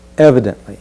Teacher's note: And let's be sure to stress that first syllable. Evidently. Just feel your body move into that first stressed sound.